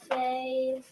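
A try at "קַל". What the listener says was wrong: No, not fail. Call. That's a koof there. Call.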